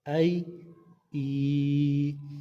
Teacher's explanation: کیونکہ یہاں پہ یا مدہ ہو رہا ہے، ہم نے پڑھا یا ساکن سے پہلے زیر آ جائے تو یا مدہ ہوتا ہے، تو اس وجہ سے اس کو لمبا کریں گے، اور یا ساکن سے پہلے پیش نہیں آتا۔